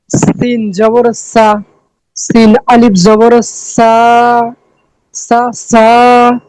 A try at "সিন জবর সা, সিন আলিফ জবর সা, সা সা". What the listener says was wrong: জি মাশাআল্লাহ।